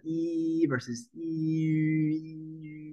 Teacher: both closed mouth sounds but at the front of the mouth the only difference between these two is what we call rounding